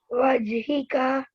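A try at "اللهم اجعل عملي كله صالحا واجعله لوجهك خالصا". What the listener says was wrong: नहीं वजअलहु आपने मिस कर दिया वजअलहु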